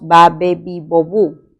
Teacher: este sonido es un sonido oclusivo bilabial y sonoro